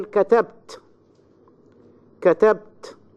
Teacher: you find your voice rises quite high at the end of a word.